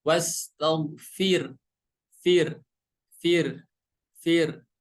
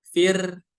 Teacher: huruf ro di sini dibaca tipis karena sebelumnya berharokat kasroh